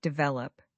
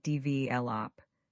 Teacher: The stress is on the second syllable, develop. Say it with me, develop, not develop, but develop.